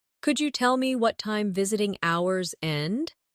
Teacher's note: In connected speech, could you becomes could ya?